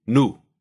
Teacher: Again, this vowel is pretty much the same in both languages, but as we just mentioned with E, some dialects of English will use 2 vowels here, something like new, where Russian consistently will use just one pure U